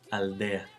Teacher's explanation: In the case of a D after an L, it's also pronounced as an occlusive. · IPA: [al.ˈde.a]